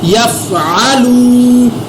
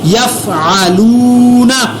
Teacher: واو مدہ کو ایک الف کے برابر میں نے لمبا کر کے پڑھا